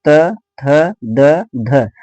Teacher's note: त, थ, द, ध आपका जीभ जो है वो दांतों में आकर के टकरा रहा है।